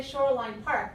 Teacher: we change a little bit and we say Shoreline Park because usually when we tell the name of a park we usually stress the the last one